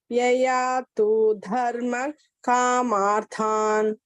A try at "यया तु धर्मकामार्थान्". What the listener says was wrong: Here, yaya tu, don't elongate. Yaya tu dharma kamarthan is kraswa. Don't elongate this. Yaya tu, not tu. Yaya tu dharma kamarthan.